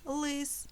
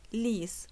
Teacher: голосний звук у них інший. В одному слові це «и» – «лис», а в іншому «і» – «ліс»